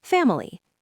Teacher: The middle syllable with the letter I gets reduced to a schwa, or sometimes it disappears entirely